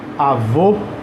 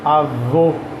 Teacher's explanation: se eu ponho um acento como é avô aí eu leio o som de ó